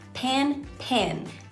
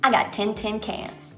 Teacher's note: Words that in your accent might rhyme with pen, and words that in your accent might rhyme with pin, are gonna merge. The vowels in them are gonna be very similar, if not the same.